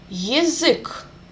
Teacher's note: U is under the stress, and Ya is reduced.